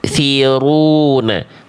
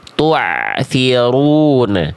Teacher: Hamzah sukun ya itu bunyinya betul-betul putus. Tsiruna kalau ain masih ngalir sedikit.